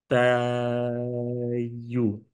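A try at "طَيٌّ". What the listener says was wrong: আরেকটু লম্বা ভাই, এটা 6।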